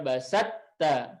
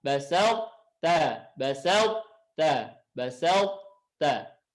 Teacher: Karena tidak semua sifatnya lebur. Huruf to ya masuk ke huruf ta, tapi ada yang tersisa yaitu sifat isti'la. Sehingga dibacanya tidak basat ta, tapi dibaca basal ta, basal ta, basal ta. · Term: idgham naqis